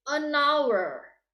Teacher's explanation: An hour, we can barely hear the H, but it's written start with a consonant. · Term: silent H